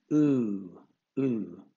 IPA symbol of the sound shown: uː